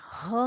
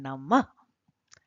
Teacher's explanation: सांप छोटे सांप के बच्चे की फुफकार की तरह इस तरह से हमको उच्चारण करना होता है विसर्ग का